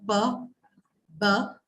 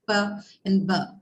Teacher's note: the site of production is the lips, right? bilabial, both your lips are involved